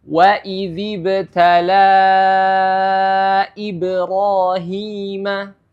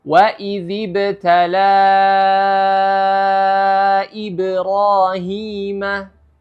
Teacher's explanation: ibrahima contoh kedua lima harakat waidziibtala ibrahima ya jadi itu hukum Mad Jaiz munfasil Ya wajib dibaca empat ataupun lima harakat